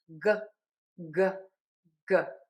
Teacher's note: So, for the G tip of the tongue is down back of the tongue is pulled high up. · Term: G sound, the G sound